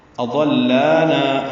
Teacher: اضلانا حمزہ جلدی سے پڑھیں گے، ضاد پر پڑھیں گے، لام سے ملائیں گے، لا الف مدہ ہے، نا الف مدہ ہے، دو حرکات لمبا کریں گے